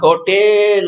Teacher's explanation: அது ஏன்னு ஏ அப்படின்னு ஒரு குறி சத்தத்தில் சொல்லாமல் ஏ அப்படின்னு இழுக்கிறானுங்க, ஹோட்டேல் அப்படிங்கிறானுங்க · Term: நெடில் சத்தத்தை